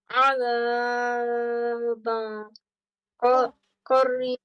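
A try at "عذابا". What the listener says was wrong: I said one second of stretching. Why do you say it more? Why do you stretch it more?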